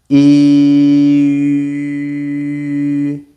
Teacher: I'm still saying e, but I just rounded my mouth and the sound changed.